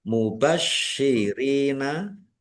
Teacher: sininnya dibaca dobel ada tasdidnya juga ditekan biar tampak dobelnya mubasyirina ro kasrh ya sukun mad thobi'i panjang dua harakat waun Nun sukun bertemu dengan huruf dal bacaan ikhfa dibaca samarsamar.